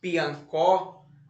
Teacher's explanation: a sílaba mais forte está na última sílaba